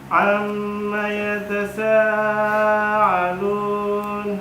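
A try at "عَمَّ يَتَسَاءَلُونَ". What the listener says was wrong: Hamzah tidak boleh sama dengan ain. Yatasa'a. Ulangi.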